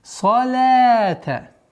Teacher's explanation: Мягкое произношение лям, и в размере двух огласовок мы тянем.